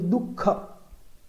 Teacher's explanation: દુઃખ શબ્દ બોલતી વખતે જે ખ ની પહેલા ઉચ્ચારાતો જે વિસર્ગ છે એ ખ જેવો જ ઉચ્ચારાય છે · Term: જીહવા મૂળ